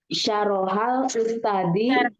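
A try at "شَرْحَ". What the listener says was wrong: Ro-nya sukun ya. Yasma'u.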